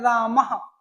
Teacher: जैसे ह की आवाज आपके रामः बोलने में आ रही है तो ह कंठ में आया है तो विसर्ग भी आपका कंठ में आएगा